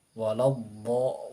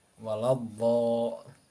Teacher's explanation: ketika pengucapan huruf dhad itu suara dhadnya memanjang dari permulaan hingga tepi lidahnya bersambung ke makhraj lamnya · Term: istitalah